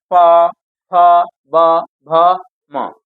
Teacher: ये सब ओठ से बोला जाता है। जब अपना लिप फोड़ सड़ता है तब बोला जाता है।